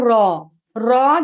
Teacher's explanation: जब हम पढ़ते हैं ना तो हल्की सी शुरू में ना तकरार जैसा साउंड सुनाई देता है वो खुद होता है हमें करना नहीं पड़ता इसका मखरज है जबान की नोक सामने के चार दांतों के मसूड़ों पर लगने से र अदा होता है।